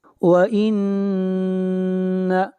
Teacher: نون کے اوپر غنہ ہوگا، آواز ناک میں جائے گی